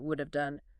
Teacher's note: It reduces to a schwah followed by a v sound. So I would have done it becomes I would done it would have done. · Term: V reduction